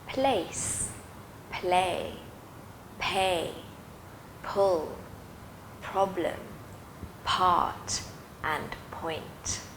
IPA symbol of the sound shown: p